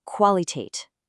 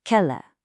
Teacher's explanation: You actually pronounce the V as a separate sound.